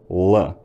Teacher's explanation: It's fairly common in modern Scots for l to be fairly velarized